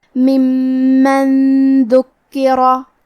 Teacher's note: دال حروف الاخفاء میں سے ہے اور اخفاء کا معنی ہے چھپا دینا، تو ہم نون ساکن کو چھپاتے ہوئے اور غنہ کے ساتھ یہ حکمے کو ادا کریں گے · کلمت ذکرہ میں حرف الدال کی ادائیگی زبان کے سر اور اوپر والے دانتوں کے اندرونی کناروں سے ہے. حرف الکاف پہ تشدید ہے تو ہم 2 حرف کے برابر کاف کو پڑھیں گے اور کیونکہ تشدید زیر کا ہے لہذا ہمیں زیر کو ظاہر کرنا ہے.